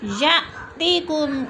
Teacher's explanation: या में हमज़ा साकिन है, झटका दे के पढ़ेंगे।